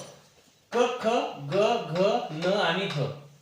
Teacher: जो वर्णांचा उच्चार स्थान आहे आपण त्याला कंठे वर्ण म्हणतो